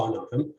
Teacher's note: the word for we stretch them has stress on the first syllable.